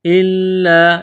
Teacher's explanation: لام مشدد ہے، لام کو دبانا ہے، سختی کرنی ہے۔